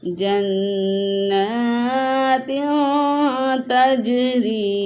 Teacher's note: یہاں پہ نون تنوین کے بعد تا حروف اخفا میں سے آیا ہے، تو یہاں پہ اخفا کریں گے، یعنی غنہ کر کے پڑھیں گے